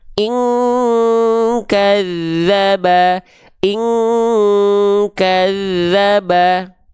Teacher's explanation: ada nun sukun berjumpa dengan huruf Kaf baru dia ini mendekati bunyi Eng